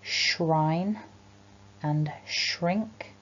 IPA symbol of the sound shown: ʃ